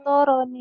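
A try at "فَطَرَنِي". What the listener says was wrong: Pendek. Pendek.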